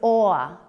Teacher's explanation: When I make this sound, my lips are forward and rounded. My tongue is back. The gesture that we use is OR.